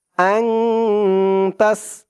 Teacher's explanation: মাঝখানে আলিফ লাম দুইটা অক্ষর বাদ যাবে।